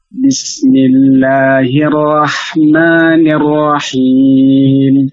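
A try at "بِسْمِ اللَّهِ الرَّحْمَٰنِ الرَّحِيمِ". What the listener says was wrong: Ulangi lagi ra-nya. Bismillahirrahmanirrahim. Tebalkan ra-nya.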